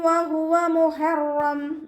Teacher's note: ഹ അഖ്സൽ ഹൽക്കാണ് മഖ്റജ് വരുന്നത്. നമ്മുടെ തൊണ്ടയുടെ അവസാന ഭാഗം, തൊണ്ടക്കുഴി നമ്മൾ പറയാറില്ല, ആ ഭാഗത്തിൽ നിന്നാണ് ഹ പുറപ്പെടുന്നത്.